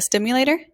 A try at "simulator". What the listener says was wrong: Simulator. Not stimulator.